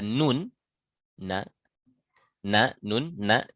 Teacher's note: ujung lidah ketemu gusi belakang di bawah makhraj lam